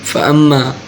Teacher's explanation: فَأَمَّا، یہ دیکھیں میم کے اوپر شد ہے، میم مشدد ہے، اس پہ ایک الف یعنی دو حرکات کے برابر غنہ ہوگا